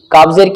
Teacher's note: जबान की जो जड़ है, उसके ऊपर एक गोश्त का टुकड़ा लटका हुआ है, उसको कौवा भी बोलते हैं। जबान के आखिरी हिस्से को उस गोश्त के टुकड़े से लगाओ तो काफ निकल जाएगा